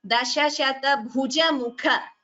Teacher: Kha is Mahaprana. Dashashata Bhuja Mukha. Bha and Kha are Mahaprana.